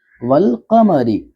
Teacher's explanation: الف کو نہیں پڑھیں گے بلکہ واو کو ڈائریکٹ لام سے جوڑیں گے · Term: حروف قمری